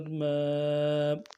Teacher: میم کھڑا زبر ما، کھڑا زبر کو ایک الف کی مدار میں کھینچنا ہے